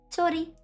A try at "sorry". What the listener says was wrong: Actually, this is not like rolling R. It's like sorry.